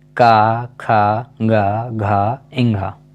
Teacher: इन सभी का उच्चारण कंठ से किया जाता है। इनका उच्चारण करते समय जो वायु है वो कंठ से आती है।